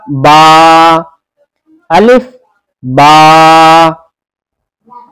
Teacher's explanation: बा, बा का मखरज है दोनों होठों की तरी का हिस्सा। दोनों होठ मिलेंगे आपस में, और जब आपस में मिलेंगे तो दोनों होठों का जो हिस्सा तर होता है वो हिस्से आपस में मिलेंगे। तो बा का मखरज हुआ दोनों होठों की तरी का हिस्सा, पढ़ा जाएगा बा, अलिफ बा।